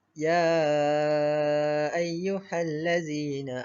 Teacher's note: Jadi cara bacaannya pula dibaca dengan panjang 4 ataupun 5 harakat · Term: mad jaiz munfasil